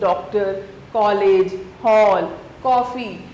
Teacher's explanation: कुछ शब्द जैसे डॉक्टर, कॉलेज, हॉल, कॉफी आदि में अ की ध्वनि पाई जाती है। यह ध्वनि आ और औ के बीच स्थित है। · यह ध्वनि आ और औ के बीच स्थित है। इसका प्रयोग अंग्रेजी के शब्दों के लिए होता है। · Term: आगत ध्वनियां